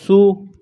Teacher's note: سین کو پتلا پڑھیں گے، سین میں سیٹی کی آواز پیدا کریں گے